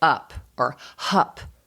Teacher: So for example, if you're seeing even a 2.5-year-old who's dropping off the k in front of the word cup, and they just say up or hup, right? And we want that back sound.